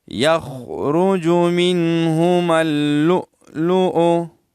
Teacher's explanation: یخرجو، اور منہما لؤلؤ جھٹکے کے ساتھ، منہما اللؤلؤ، اور نون ساکن ہے، یہاں اخفا نہیں کیا جاتا ہے، کیونکہ یہاں جو ہے نون تو ساکن ہے، لیکن نون ساکن کے بعد حروف حلقی میں سے ایک حرف آیا ہے جو ہا ہے، تو یہاں اظہار حلقی ہوگا